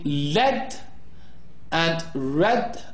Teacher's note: the initial sounds in lead and red are described as liquids. They are both voiced. The L sound is called a lateral liquid and is formed by latering the airstream flow around the sides of the tongue.